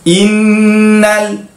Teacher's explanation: Innal yang itu wajibal gunnah, kena dengung.